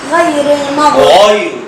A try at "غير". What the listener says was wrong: الغير تفخم وليس توقف.